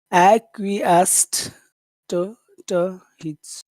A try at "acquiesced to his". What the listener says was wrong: acquiesced to his. Acquiesced to his. You have to say 3 syllables. You're only saying 2.